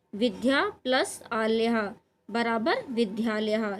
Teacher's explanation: विद्या में आ पहले बड़ा आ है और बाद में भी बड़ा आ है, तो दोनों मिलके क्या हो गए हैं? बड़ा ही हो गया है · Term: दीर्घ संधि